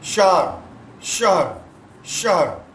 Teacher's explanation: ہا کو ساکن پڑھنا ہے, زبر نہیں پڑھنا